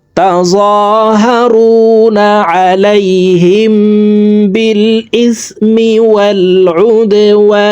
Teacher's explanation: ওয়াও এখানে 3 আলিফ টেনে নুনকে সাকিন করতে হবে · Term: মধ্যে আরজি